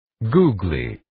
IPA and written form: guːgliː (Googly)